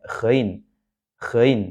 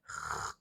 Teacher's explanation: Gin ini keluar di tenggorokan bagian atas maka di sini ee huruf gain itu seolah-olah ada semacam vibrasinya atau getarannya